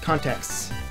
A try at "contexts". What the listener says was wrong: Contexts. No, context with an S on the end, plural.